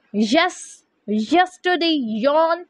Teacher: palatal sound is made with the front of the tongue articulating against the hard palate